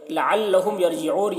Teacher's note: میم ساکن کے بعد یا ہے تو میم میں اظہار شفوی ہوگا، میم کو ظاہر کر کے جلد پڑھیں گے